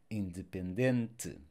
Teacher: these words ending with the E, this vowel will be mute or almost mute